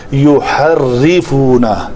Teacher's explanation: يحرفون ری شفتیں پیچھے جائیں گے اور را کے اوپر زبان تھوڑی سی ایسے تکرار ہوتی ہے لیکن حقیقی تکرار سے بچنا ہے. یوحر یہ میں زور سے اس لیے کر رہا ہوں کہ پتہ چلے کیا ہو رہا ہے.